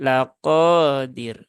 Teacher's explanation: tetapi laqodir ya tidak ada rumus yang membuat dia terbaca panjang dan rnya ini tipis ya bukan tebal